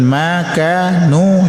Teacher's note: itu ketiganya mad asli atau mad tabi'i. Panjangkan 2 harakat.